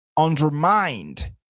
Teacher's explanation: Ici, c'est vrai qu'on dit under, donc on serait tenté de dire undermined, mais attention, le stress sera sur la troisième syllabe